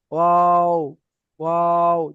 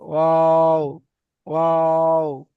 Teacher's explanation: দুই ঠোঁট না মিলিয়ে মাঝখানে উচ্চারিত হয়। দুই ঠোঁট মানে মিলবে না, মানে মাঝ বরাবর থাকবে, মানে মেলার কাছাকাছি থাকবে, ওয়াও উচ্চারণ হবে ওয়াও, ওয়াও।